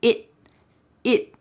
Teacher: And that final word, it, also has a stopped T. So that T is going to be at the top of my mouth.